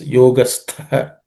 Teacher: The tha is second letter in the third class of consonants. It has to be aspirated.